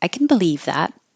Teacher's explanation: the positive can has very short duration